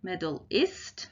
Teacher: in medal the med is the stress syllable and the al is the unstressed syllable